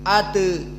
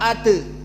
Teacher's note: taklil condong kepada kasrah sedikit